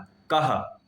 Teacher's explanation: इस विसर्ग का उच्चारण संस्कृत में हमेशा ह की तरह होता है।